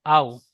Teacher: হামজা ওয়াও জাবার আও, নরম আওয়াজে তাড়াতাড়ি পড়তে হবে। টান দেওয়া নিষেধ, টান দেব না। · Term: ওয়াও লিনের